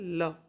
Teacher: फिर आता है पार्श्विक व्यंजन जिनके उच्चारण में जिह्वा का अगला भाग मसूड़े को छूता है और वायु पार्श्व मतलब कि आसपास से निकल जाती है।